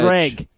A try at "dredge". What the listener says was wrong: Dredge. Because you're saying the G at the end. No.